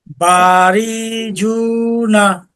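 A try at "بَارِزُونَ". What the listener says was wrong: হ্যাঁ, এই যে বা, ঠিক আছে। এই রিতে টান হবে না, রিতে দেখেন কারোর সাথে মিলে নাই। টান হয়তো কখন, যদি জবরের পরে জজমালা ইয়া থাকতো। হ্যাঁ, রিটা আরেকটু তাড়াতাড়ি, বারিঝুনা।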